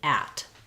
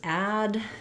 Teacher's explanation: So both of these have the same vowel sound, which is the a vowel, like in black cat. And the main difference between at and add is in how long we're holding that vowel